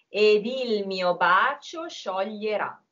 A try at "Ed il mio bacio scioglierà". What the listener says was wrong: So, bacio is a very hard thing to sing without doubling the ch. And you did it,